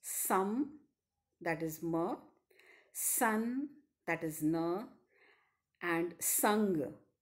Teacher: As the name suggests, the active and passive articulators are in firm contact with each other, thereby stopping the oral passage of air completely. But here, the soft palate is lowered so that the nasal passage of air is opened. The lung air escapes through the nostrils freely, and sounds that are articulated with the stricture of complete oral closure are called nasals.